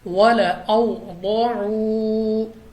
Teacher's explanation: ضاد جو کہ مستعلیہ میں سے ہے تو ہم نے اس کو پر پڑھنا ہے اور واو ساکن سے پہلے پیش ہے تو یہ واو مدہ ہے.